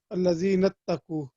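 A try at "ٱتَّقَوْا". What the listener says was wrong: No, we separate this word, so we have to read it properly first. Ittaqu. You see, there's a zabar on qaf. So the first word will be ittaqa. Ittaqa.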